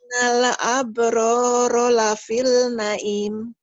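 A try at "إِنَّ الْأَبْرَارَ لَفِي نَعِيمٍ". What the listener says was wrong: kenapa lapil? Ayo, kenapa lapil? Emang ada lam di sini? Jangan buru-buru. Jangan buru-buru. Tenang ya. Jadi bacaan itu kalau tenang, artikulasinya jadi bagus. Innal abroro lafi na'im.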